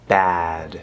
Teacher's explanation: it's a front vowel so we want to feel the vowel here in the front